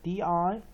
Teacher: main stress on first syllable and third syllable